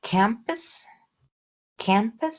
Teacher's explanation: So, the k is aspirated and the digraph is nasalized.